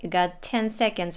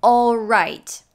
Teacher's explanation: she says oh instead of all